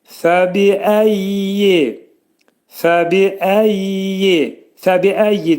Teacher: Fəbiəyyi də fə incə samitdir. Hərfin məxrəci yuxarı üst dişlə alt dodağın arasında olacaq. Bi incə samit.